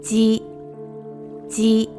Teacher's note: the consonant for this sound is read as a voiced J sound rather than Z sound